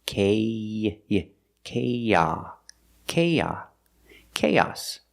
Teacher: When you link these two vowels, the long a and the short a sound, we link them with the y sound like in yellow and yesterday.